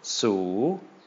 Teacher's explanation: hi class plus a long vowel is gonna be a long rising tone